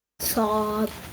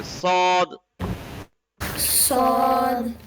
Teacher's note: salt is a heavy letter it has an ah sound in it and it is a hard letter we have to use Force